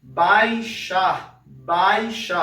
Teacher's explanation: Repara que o som do A sai um pouco mais forte que esse som do I · Repare que o som do A sai um pouco mais forte que esse som do I, né? Então a gente tem aqui mais uma vez a vogal, o som mais forte, e a semivogal, esse som um pouco mais fraco, tá? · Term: encontro vocálico